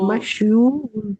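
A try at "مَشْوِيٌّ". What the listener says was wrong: मशवू, ठीक है, मशवू, और एक और वाव भी आएगी, मफऊ, मशवूयुन, ये आएगा, ठीक है।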